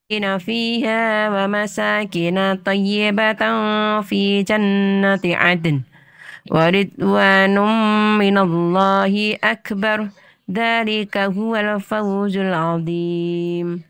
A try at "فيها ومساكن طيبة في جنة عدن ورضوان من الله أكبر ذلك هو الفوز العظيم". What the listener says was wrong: Ya, Ibu, untuk koreksinya mayoritas di panjang pendek Ibu ya. Jadi banyak sekali tadi yang bacaan yang panjang dipendekkan atau sebaliknya yang pendek dipanjangkan. Makanya perlu perhatian dan perlu Treatmentnya konsentrasi dan bacaannya lebih dipelankan lagi.